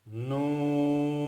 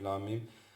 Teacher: Noon mushaddad and mim mushaddad are two gunna letters, and gunna is pronounced from the nose. So you close the mouth and go that's a noon.